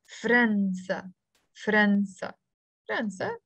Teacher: In the Lebanese dialect, we pronounce it with a skun on the fe and followed by a fatha on the ra.